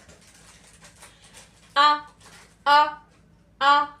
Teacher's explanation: ये हमारे कहां से निकल रहा है, अक्सा हलक से